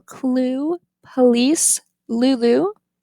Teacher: the light L clue police Lulu it's prevocalic